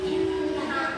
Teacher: nun ketemu tasydid ini berarti dia guna musyaddada, dibacanya dengung